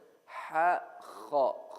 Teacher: Kha comes right above the makhraj of the letter ha. If this is the back of my throat, ha comes from here, kha comes from here, right, just above it.